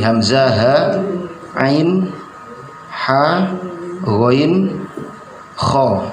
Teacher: 6 huruf ini adalah huruf yang berada di makhrajnya berada di halak atau tenggorokan. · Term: izhar halqi